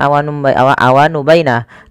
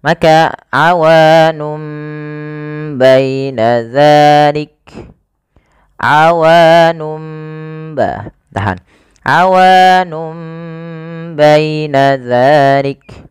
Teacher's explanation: Nah, sehingga awalnya kan nun diganti dengan mim karena dia bacaan iklab, yaitu nunnya bertemu dengan huruf ba. Awalnya awanun menjadi awanum, maka di sini mim itu dianggap mati saja sehingga bunyi awanum. Langkah selanjutnya adalah ketika iklab itu ditahan suara iklabnya, maka awanum baina dzalik, awanum ba, tahan, awanum baina dzalik.